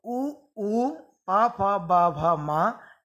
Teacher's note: इन वर्णों का उच्चारण स्थान है ओष्ठ, इसलिए ये कहलाएंगे ओष्ठ वर्ण।